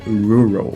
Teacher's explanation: no inglês a gente tem esse som de R que a gente chama de R retroflexo